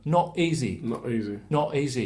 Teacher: So, for example, if I was from London and I had an accent, I'd do what's called a glottal stop here, which means I'm doing it, not doing the T